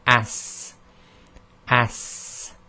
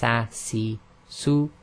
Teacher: So there's a sort of whistling sound at the end